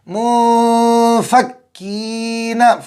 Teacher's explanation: منفکین، فا نکالو اچھے طریقے سے، فا اوپر کے دانتوں کا کنارہ اور نیچے کے ہونٹ کے تری والا حصہ